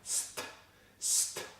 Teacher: Push air between the tongue and the ridge to make the S sound, then block air by pushing the tip of the tongue against the ridge, and then suddenly release the air to make the T sound. · place the tip of your tongue on the ridge just behind your top teeth, push air between the tongue and the ridge to make the /s/ sound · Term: ST consonant cluster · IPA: /st/